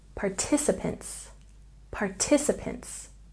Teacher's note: Going back to check pronunciation, copies has a stress on the first syllable, copies, copies. And participants has a stress on the second syllable